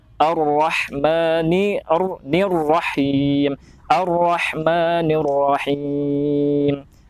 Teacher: Huruf ro itu harus jelas, apalagi ketika dia bertasydid dan dibaca tafkhim atau tebal.